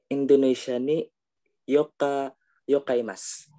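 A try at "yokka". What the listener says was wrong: We have yoka double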